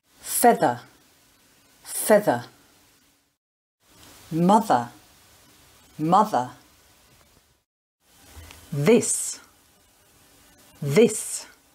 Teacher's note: stick your tongue out between your teeth your teeth don't touch your tongue but come close and you blow air out around your tongue and use your voice box to make the sound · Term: voiced consonant sound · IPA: ð